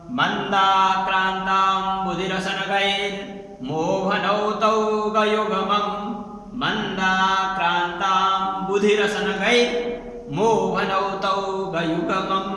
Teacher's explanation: पहिला मगण हुन्छ, मगण अर्थात् तीनवटै अक्षर दीर्घ हुन्छन्। त्यसपछि भगण, भगणमा पहिलो अक्षर दीर्घ हुन्छ, त्यसपछि दुईवटा ह्रस्व हुन्छन्। त्यसपछि नगण, नगणमा तीनवटै अक्षर ह्रस्व हुन्छन्। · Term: मन्दाक्रान्ता छन्द